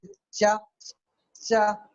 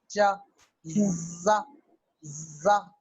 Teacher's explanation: पहले रुकते हैं और फिर जो है रगड़ से बाहर निकलते हैं, वो एफ्रिकेट्स कहलाते हैं।